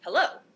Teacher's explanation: is a collection of two syllables the first one unstressed the second one stressed